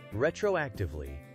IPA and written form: ˌrɛtroʊˈæktɪvli (Retroactively)